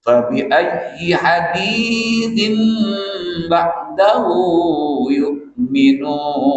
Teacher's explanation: Bunyi tanwin ditukar kepada bunyi mim serta dengung. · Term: iklab